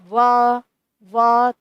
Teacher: वकार का उच्चारण स्थान क्या है? दांत और ओष्ठ बोलोगे व व तो व जब आप बोल रहे हो तो ध्वनि दांत और ओष्ठ से आप ये वकार की ध्वनि उत्पन्न होती है।